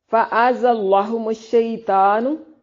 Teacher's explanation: زا کو زور کے ساتھ ادا کرتے ہیں، سیٹی کی ساؤنڈ آئے، بزنگ ساؤنڈ